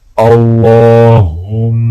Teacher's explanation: لام کو موٹا پڑھا جائے گا اور لام کے اوپر کھڑا زبر ہے، ایک الف کے برابر کھینچ کے پڑھیں گے، اور میم کے اوپر غنہ کیا جائے گا